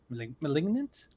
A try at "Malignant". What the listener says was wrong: Malignant. you do like a E. I think you put an E in there. Malignant.